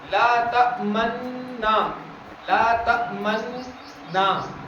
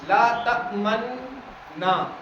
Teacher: نا تو ہمیں زبر کے ساتھ ہی پڑھنا ہے، لیکن ہم تھوڑے سے ہونٹوں کو گول کرتے ہوئے پڑھیں گے